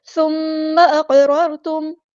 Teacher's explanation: سا ہم نے باریک پڑھنا ہے، نرمی سے ادا کرنا ہے اور میم پر غنہ زمانی اور ایک الف کے برابر رکیں گے.